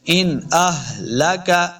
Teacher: ہا جو ہے نا یہ حلق کے نچلے والے حصے سے ادا کریں گے